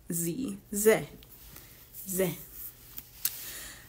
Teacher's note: this would be the and then this one is a z so it's like a breathy z